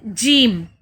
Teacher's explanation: جیم زبان کا درمیانی حصہ اوپر تالو سے مکمل طور پر لگ کر پھر کیا ہوتا ہے، اچانک جدا ہو جاتا ہے